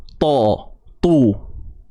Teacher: Pangkal lidah ni akan naik meninggi. Dan hasil yang keluar ialah suara yang tebal. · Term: isti'la